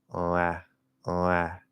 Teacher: I'm going from nasal O to ah